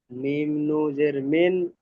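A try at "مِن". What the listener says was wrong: নু বলছেন কেন? নুনটা পুরো উচ্চারণ করুন। মিম নুন জের মিন।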